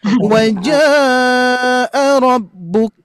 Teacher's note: 4. 4 harokat sampai 5 harokat mad wajib